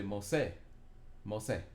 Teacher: You put the accent on the se part.